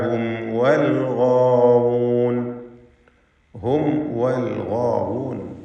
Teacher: ഇൽഹാർ ഷഫവിയാണ്. സൂക്ഷ്മതയോടെ ഇൽഹാർ ചെയ്യേണ്ടതാണ്, കാരണം വാവ് ഷഫവിയ അക്ഷരമായതുകൊണ്ട് മീമിൻ്റെ ഉച്ചാരണം അവ്യക്തമാവാൻ കൂടുതൽ സാധ്യതയുണ്ട്. ഹും വൽ ഗാവൂൻ, ഗൈനിനും അതിൻ്റെ ദീർഘാക്ഷരമായ അലിഫിനും തഫ്ഖീം കൊടുക്കണം, പൂർണ്ണമായ തഫ്ഖീം.